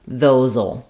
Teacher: So you don't write it, you're going to write "those will," but what we tend to say there is "those'll." So this SE is a Z sound voiced in this word, so I'll rewrite that as a Z.